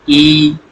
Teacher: ऐसे स्वर जिनको बोलने के लिए जीभ के आगे आगे वाला भाग प्रयोग होता है। जीभ का आगे वाला भाग प्रयोग होता है। · ई में आपकी आगे वाली जीभ जो है दांतों में लगती है, आगे वाली जीभ को काम करना पड़ रहा है, इसलिए इनको अग्रस्वर बोलते हैं।